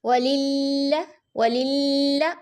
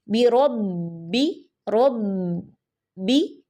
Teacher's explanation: लाम मुशद्द में आवाज हमने चलती रहेगी हमारी ठीक है और मजबूती आएगी लेकिन बा मुशद्द में आवाज चलेगी नहीं बल्कि दरमियान में रुक जाएगी · بربہم، اور اس میں آواز جو لام میں اور با میں مشدد میں فرق کیا ہے کہ لام مشدد میں آواز ہم نے چلتی رہے گی ہماری، ٹھیک ہے، اور مضبوطی آئے گی. لیکن با مشدد میں آواز چلے گی نہیں بلکہ درمیان میں رک جائے گی